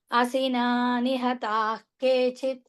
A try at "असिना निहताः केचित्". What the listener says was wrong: Yeah, nihataha visargam followed by a k. So ik sound needs to come. Asina nihatah kechit